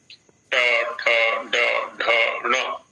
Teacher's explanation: जिह्वा के अग्र का जो ऊपर वाला भाग है उससे मूर्धन्य नाम मूर्धन्य वर्णों का उच्चारण होता है